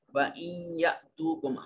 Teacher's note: حمزہ کے اوپر جزم ہے، اس کو جھٹکے سے ادا کریں گے